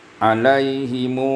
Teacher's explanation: Alaihim silah mim biwawin maddiyah mushba'atan, iaitu membaca silah mim dengan waw mad, iaitu mad, silah waw mad yang dibaca panjang sebanyak 6 harakat karena dia bertemu dengan hamzah